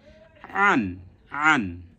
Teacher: এই যে উল্টা কমা ব্যবহার করে এটা বুঝিয়েছি, যেটা কি কোথা থেকে উচ্চারণ হবে, হালকের মাঝখান থেকে উচ্চারণ হবে, মনে আছে নিশ্চয়ই। হালকের কোথায়, মাঝ কণ্ঠনালীর মাঝখান থেকে উচ্চারণ হবে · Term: আইন